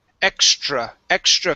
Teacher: with the tr you want to pronounce that like a ch